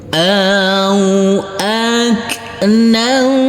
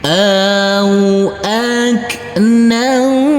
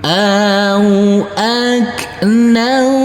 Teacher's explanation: Huruf nunnya kita samarkan dan kita dengungkan. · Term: bacaan ikhfa